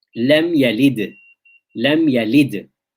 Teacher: Wusta is when you had it at the end of a word. Now, because it's at the end of the word, the echo will be increased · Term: qalqala wusta